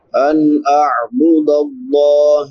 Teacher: نون ساکن کے بعد حروف حلقی میں سے حمزہ ہے تو یہاں پہ اظہار ہوگا